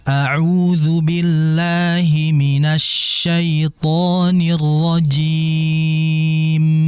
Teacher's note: Jadi ditahan terlebih dahulu ghunah mim ya.